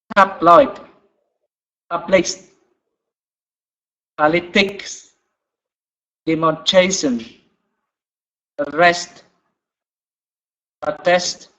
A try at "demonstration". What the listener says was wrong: Okay, that was good, but also number 4, I did not hear the S. Demonstration.